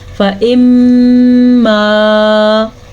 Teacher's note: میم پہ شد کی وجہ سے ہم نے غنہ کیا